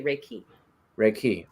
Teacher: uh is it raiki riik riky Reiki so it's reik key so the emphasis goes on the second syllable